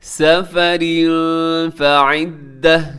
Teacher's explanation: مریضا او علی سفر فعدہ، سفر میں تنوین ہے، تنوین کے بعد فا ہے، یہاں پہ اخفا کریں گے